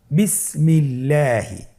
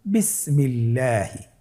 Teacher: আল্লাহ শব্দের দ্বিতীয় লামের আগে এখানে জের এসেছে, আপনারা জের দেখতে পাচ্ছেন। এই জন্যে আল্লাহ শব্দের দ্বিতীয় লামটিকে বারিক করে পাতলা করে পড়তে হবে। আপনি যদি বলেন বিসমিল্লাহি, তাহলে এই পড়াটি বিশুদ্ধ হবে না, আপনাকে পড়তে হবে শুদ্ধ করে।